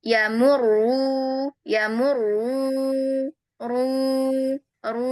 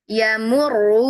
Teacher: Nah kemudian dia berderet domah lagi. Maka domahnya yang setelah mim ini kita harus pastikan arah suaranya itu ke depan Kak. Enggak ikut ke hidung lagi.